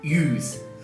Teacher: she's using a monophthong, which is a kind of an oo, just a pure O sound. So use. It's not use.